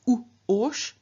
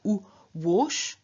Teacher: And in the case of the strong stem of ush, we have not u-osh, but we have u-wosh. So a w has been inserted, which is the semivowel counterpart of u.